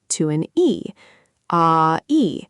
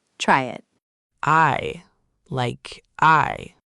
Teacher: when you say the word I, you don't say two separate sounds. You glide smoothly from an ah to an e, ah-e, all in one breath. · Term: compound finals